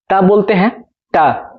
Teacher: मतलब इन्हें कि दंत पे रखा है। मतलब जब हम ता बोलते हैं, ता, तो जीभ हमारा है वो दांत में जाके सटता है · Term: दंत वर्ण